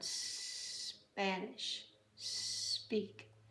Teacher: The S does not have an E in front of it. So you start with the snake sound